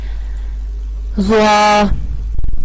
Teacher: زوا کا مخرج بھی یہی ہے جو سا اور زال کا مخرج ہے، زبان کی نوک اور ثنایا علیہ کا سرا